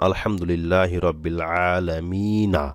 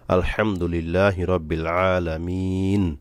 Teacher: যেমন আলহামদুলিল্লাহ রব্বিল আলামিনা, এখানে কিন্তু নুন যেমন না আছে, কিন্তু আমরা বলি কি আলহামদুলিল্লাহ রব্বিল আলামিন। এই যে নুনে সাকিন করলাম, এটাকেই বলা হয় ওয়াকফ বা থামা।